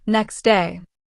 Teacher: next day might sound like next day. The T disappears. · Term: Elision